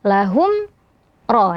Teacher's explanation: hukumnya juga izhar syafawi ya. Jadi mimnya dibaca jelas.